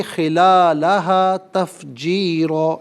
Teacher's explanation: خلالہ میں لام پر کھڑا زبر ہے، سے ایک الف کی مقدار کھینچ کر پڑھیں گے